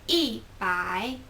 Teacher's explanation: e kind of becomes fourth tone and by is still third tone